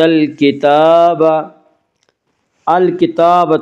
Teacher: موسی الکتاب، الکتاب تا کے اوپر کھڑا زبر ہے، کھڑا زبر کو ایک الف کے برابر کھینچ کر پڑھیں گے